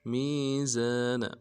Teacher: وَلَا تُخْسِرُوا الْمِيزَانَ میم کو یا کے ساتھ ملانا ہے، یا مدہ ایک الف دال میں کھینچیں گے، زا سیٹی والا حرف ہے، زا کے ساتھ الف مدہ ہے، ایک الف دال میں کھینچیں گے، نون کو نون سے ادا کریں گے۔